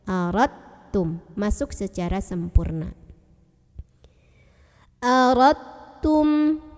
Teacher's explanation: Jadi udah nggak ada pantulan di dal ya.